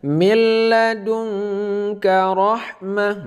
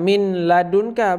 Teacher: tidak berdengung jadi kita baca seperti tasydid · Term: idgham bilagunnah